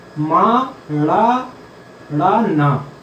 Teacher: वायु जो है नाक से होती हुई निकलती है, तो इनका उच्चारण स्थान नाक भी है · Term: अनुनासिक वर्ण